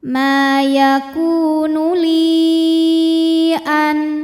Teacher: ya kemudian hamzahnya a ini masuk ke kata kedua yaitu an maka lamnya ini dipanjangkan boleh panjang empat boleh juga lima harakat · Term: Mad Jaiz munfasil